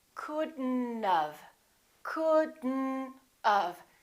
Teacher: don't pronounce the o don't pronounce the t